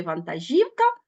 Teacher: а в слові вантажівка наголошений третій склад